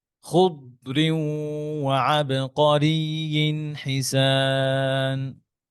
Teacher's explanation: বাতাস বের করা যাবে না দদের মধ্যে, হ্যাঁ, দদের মধ্যে হামস নাই এবং কলকলাও নাই